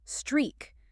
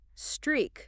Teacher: Make sure you stretch that E sound in the middle, like the word tree.